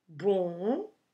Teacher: the M it's there just to make the previous vowel nasal so don't close your mouth pronouncing this word